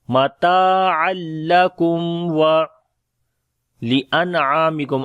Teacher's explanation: After the meme sakin there is waw. We make izhar shafawi here. The clear sound of meme